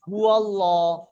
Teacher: এই জি লামের পূর্বের অক্ষরের উপরে যদি জাবার আর পেশ আসে তাহলে ওই আল্লাহর লামটাকে পুর করে, অর্থাৎ মুখটা গোল করে পড়তে হবে।